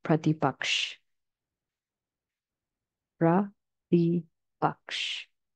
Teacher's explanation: The a at the end of the word in English is actually a schwa sound and should not be pronounced. So we want to avoid saying pratipaksha or pratipaksha.